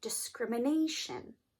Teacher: How do I know which syllable to stress? Well, you stress the syllable right before the ending, right before the suffix. And that would be the A.